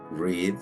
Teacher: las sílabas abiertas y cerradas por ejemplo en la palabra read es una sola sílaba termina en consonante y usamos el sonido cerrado de la i